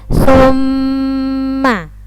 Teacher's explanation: Nah, mim ditasydid ini namanya bacaan hunnah dan cara membacanya adalah dengung ya.